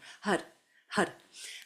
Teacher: It's the mantra Har, H-A-R. And on that R, the tip of the tongue hits the roof of the mouth to make almost like an L or a D sound. Har, Har. And we're using that mantra with the navel with this next exercise.